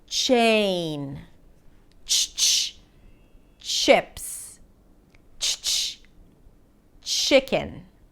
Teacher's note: Remember, you want to think of it as if you're pronouncing a T sound and then releasing it to a SH · the ch sound is an affricate. So you block the air with a T in a way.